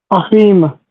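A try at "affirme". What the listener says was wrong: Yes, it's affirm, affirm. Okay, don't skip the R, but yeah, we'll get there. Yes, close.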